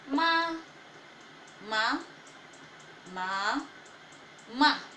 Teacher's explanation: the flat tone, the rising tone, the falling rising tone, and then the falling tone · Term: tones